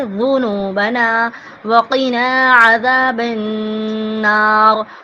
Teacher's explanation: وقنا کا جو قاف ہے اس کو ہم حلق سے ادا کریں گے